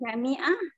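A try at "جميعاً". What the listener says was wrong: Nahnu sebutan jami'an tu kan, sebutan habis. Habis, jami'an. Macam syukran, aiban. Sebut habis, nahnu jami'an, ataina.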